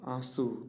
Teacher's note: આંસુમાં સ્વર પોતે જ નાસિક્ય છે. આંસુ તેના નાસિક્યપણાને કોઈ વર્ગના વ્યંજન સાથે આપણે જોડતા જ નથી.